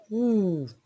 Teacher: For instance, if you produce woo, the oral cavity becomes narrow and the lips are rounded while the back of the tongue is raised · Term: long who